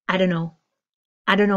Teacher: my phrase of don't know becoming dono